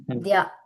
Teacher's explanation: ఇది ద్య అనేది మహాప్రాణం కాదది ఇక్కడ దకారము తర్వాత యకారం ఇలా ఉంది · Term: దకార యకారం